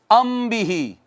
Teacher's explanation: یعنی میم پر آواز کو کتنی دیر کے لیے روک کر رکھیں گے؟ ایک الف کے برابر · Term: اخفا